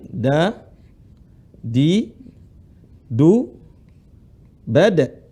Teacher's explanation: Da, di, ujung lisan ketemu dengan gusi gigi seri atas. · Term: huruf dal